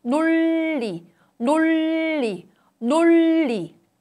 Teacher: However, in 논리, 논리, 논리, there are two 르 sounds. The tip of the tongue makes extended contact with the upper gum. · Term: lateralization